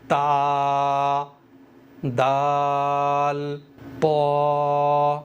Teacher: ज़बान की नोक सनाया उलिया की जड़ से मिलकर अदा होते हैं